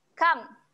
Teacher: Jelaskan saja bunyi mim mati tu jangan dengung kat sini